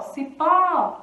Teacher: A sílaba forte, então, é pó